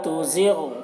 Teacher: غین کو پر پڑھیں گے، غین حروف مستعلیہ میں سے ہے اور غین میں قلقلہ نہ ہونے پائے